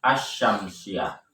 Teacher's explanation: pada lafaz asy-syamsiyah meskipun ada alif lam tidak terdengar al-syamsiyah, tetapi langsung dibaca asy-syamsiyah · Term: idgham syamsiyah